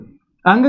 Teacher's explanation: अंग का उच्चारण स्थान कंठ भी है और नासिका भी है।